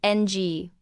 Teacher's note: Another example would be ng, which is a velar nasal, which is a sound made by closing off the back of the mouth and nasalizing your voice